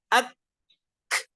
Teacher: lidah bagian Aqsa bertemu dengan langit-langit ketika kita mengucapkan huruf Kaf tersebut